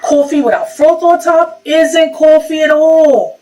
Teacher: a raised vowel in words like thought and cloth. It sounds something like aw.